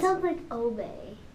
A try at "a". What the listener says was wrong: almost, yeah, it sounds like obey, but it's ah. Like ah.